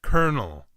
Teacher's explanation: However, those learning English as a second language get confused by the first O sounding like an E, the L that sounds like an R, and the second O which is completely silent